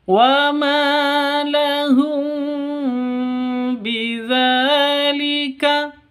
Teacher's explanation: ini namanya ikhfa syafawi. Ikhfa syafawi. Jadi cara bacanya samar didengungkan ya.